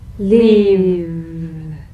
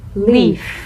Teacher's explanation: If you don't have enough vibration in your V's, they'll end up sounding like the F because they're exactly the same. One has vocal cord vibration, the other is unvoiced.